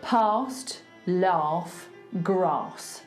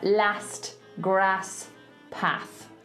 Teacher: so in cockney we do an AH sound for these A's